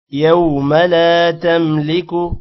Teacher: یو کو لمبا کریں گے ما کو لمبا نہیں کرنا لا الف کی وجہ سے لمبا ہوگا